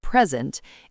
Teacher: If you stress the first syllable, present, it's a noun or adjective. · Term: word stress